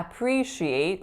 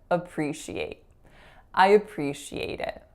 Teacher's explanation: that vowel should be a schwa so a really really short up sound